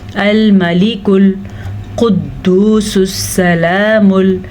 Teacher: ये मोटा क़ाफ़ है, इसको मोटा करके अदा करना है, पुर करके पढ़ना है।